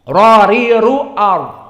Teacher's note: Maka di sini dia mufakhamah. Maka ra makhrajnya dia adalah zahir lisan, belakangnya lisan, bukan depan tapi punggung.